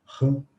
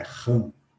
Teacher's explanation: nessa palavra, nós até pronunciamos também o M, mas antes de pronunciar o M, nós nasalizamos o A. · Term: vogal nasal